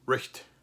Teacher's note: The GH in English is no longer pronounced, but it's still there. It used to be pronounced very close to the German CH, like a H sound.